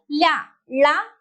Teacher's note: ഉച്ചാരണ അവയവം ഉച്ചാരണ സ്ഥാനത്തിന്റെ മധ്യഭാഗത്തായി സ്പർശിച്ച് വായു നിശ്വാസവായു രണ്ടു ഭാഗങ്ങളിലൂടെയാണ് കടന്നുപോകുന്നതെങ്കിൽ അതാണ് പാർശികങ്ങൾ എന്ന് പറയുന്നത്